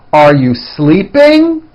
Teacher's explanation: Notice how my voice goes up at the end of a question like this.